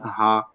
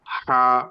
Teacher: ছোট হা যেটা গোল হা, এটা উচ্চারণ আপনি হলকের শুরু থেকে করবেন, একদম গা ছেড়ে দিয়ে অলসের মতো উচ্চারণ করা যায়, এটা কোনো সমস্যা নাই, হা।